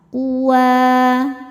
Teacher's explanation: Sebab huruf wau berharakat fathah panjang. Cara bacanya panjang dua harakat. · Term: mad thobi'i muqaddar